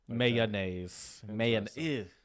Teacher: a good bit of the Westy kind of area says it with 3 syllables